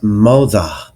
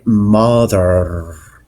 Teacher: Features rhoticity, meaning that the letter R is pronounced after vowels.